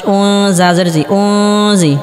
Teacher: নুন সাকিনের পরে ইফার হরফ জ আসার কারণে এখানে ইফা গুন্নাহ করে পড়তে হবে অর্থাৎ গুন্নাহকে গোপন করে পড়তে হবে